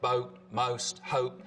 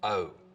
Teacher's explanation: Down in North Carolina, we really start to hear pretty significant goat fronting again. So the vowel sound in boat, most, hope starts with the tongue further forwards in the mouth